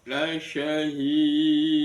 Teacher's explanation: dalnya dibaca qalqala kubro · Ada mad tabi'i, la syahid, ada hak kasrah bertemu dengan ya, itu mad tabi'i, kemudian bertemu dengan waqaf, maka namanya mad aridi lisukun. Cuma diakhiri dengan dal, maka dalnya dibaca qalqalah kubra